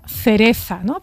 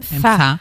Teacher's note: se pronuncia como un sonido interdental porque ponemos la lengua entre los dientes para pronunciarlo